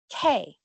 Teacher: Según la lingüística, las consonantes plosivas u oclusivas son sonidos que se distinguen por completamente detener y después liberar el flujo de aire. Cuando empiezo a decir OK o me preparo para hacer el sonido K, cerrando la garganta, lo que detiene el aire. Para producir la segunda parte, OK, libero el aire.